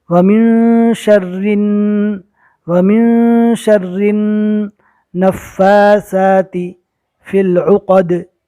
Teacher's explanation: نون پر تشدید ہے، گنہ کے ساتھ پڑھیں گے